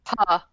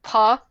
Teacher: mouth and like say a p, make a p noise. Feel that blast of air that hits your hand. That's a plosive.